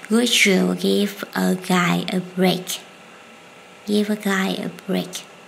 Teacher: D and Y will join together and change to Z.